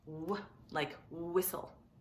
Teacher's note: And then there's WH. WH says w, very similar to just a W. It sort of has a little bit of a breath